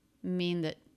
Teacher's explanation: We do have a quick voiced TH here, I believe. Schwa and a stop T. That. Not too clear.